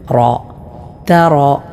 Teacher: റായിനെ തഫ്ഹീം അഥവാ തടിപ്പിച്ചുകൊണ്ടാണ് മൊഴിയേണ്ടത്